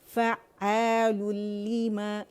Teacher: یہاں ادغام تام بلا غنہ ہوگا، بغیر غنہ، یعنی یہاں غنہ نہیں کریں گے